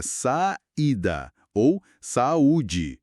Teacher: O I e o U formam sílabas sozinhos aí. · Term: hiato